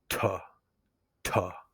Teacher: That puff of air is what we call aspiration. So when you do the tuh, you put your hand in front of your mouth, you should feel the air. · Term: aspirated T